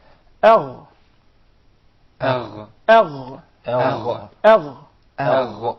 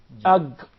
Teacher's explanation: the ghain comes from the closest part of the throat to the mouth.